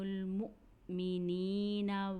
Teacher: جب مؤمنین مس کہہ رہی ہیں تو حمزہ ساکن کو جھٹکے سے ادا کر رہی ہیں، کیونکہ یہ قرآن کا قاعدہ ہے کہ جب حمزہ کے اوپر جزم ہو یعنی حمزہ ساکن ہو تو ہمیں اسے جھٹکے سے ادا کرنا چاہیے۔